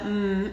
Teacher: these nasals all right so here i have this sound is produced by pushing our lips together and you can feel that the mm is made at the front of our mouth and the sound is then directed out through our nose so